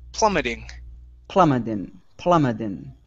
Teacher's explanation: switch that t to a flap t